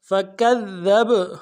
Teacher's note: اگلے ذال کو باریک ادا کرنا ہے, با کے ساتھ ملائیں گے, با کے اوپر جزم ہے, قلقلہ ہوگا